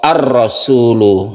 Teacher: Idgham itu kan masuk. Jadi harokatnya itu langsung masuk ke ro. Langsung masuk ke huruf ro. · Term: idgham syamsiyah